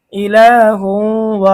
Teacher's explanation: তানভনের পরে ঈদগামে বাগুন হরফ ওয়া এসেছে গুন্না সহ মিলিয়ে পড়তে হবে